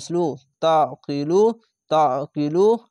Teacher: আইনটিকে আলিফের মতো উচ্চারণ করবে না আইনকে আইন আইন জবর অ গলা চিপে এবং মোটা করে পড়বেন